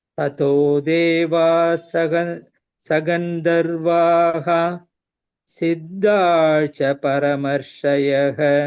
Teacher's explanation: Gandharvaha, the dha is Mahapranaha. Siddhascha, the second dha is Mahapranaha.